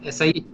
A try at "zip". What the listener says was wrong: No, it's Z, Z.